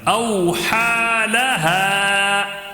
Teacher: او، واو لین، ہا کھڑا زبر کا ایک الف برابر کھینچ کر پڑھیں. ہا الف سے پہلے زبر ہونے کی وجہ سے الف مدہ تھوڑا کھینچ کر پڑھنا ہے